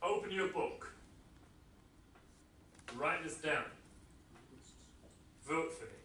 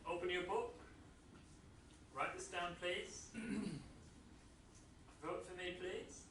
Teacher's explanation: So a command has a falling intonation, unless I want it to sound polite, more like a request, and then I use a rising intonation.